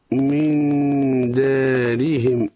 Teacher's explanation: من دارهم نون ساكنة بعدها حرف الدال، ما حكمها؟ حكمها الإخفاء مع الغنة